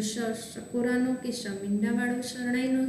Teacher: શ છે એને આપણે તાલવ્ય સંઘર્ષીમાં મૂકેલ